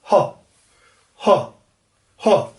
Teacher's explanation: प्लेटल में ये सारा ये हिस्सा, ये वेलर पीछे का हिस्सा, ग्लोटल बिल्कुल गले में जो साउंड बोला जाता है